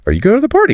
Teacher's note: exactly the rising intonation it's lovely